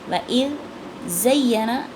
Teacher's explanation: وَإِذْ زَيَّنَ، پہلے دال باریک ہے، دونوں دانتوں کے درمیان زبان کو لا کے ادا کرنا ہے، اور دوسرا زا سخت ہے، اس میں سیٹی کی آواز آئے گی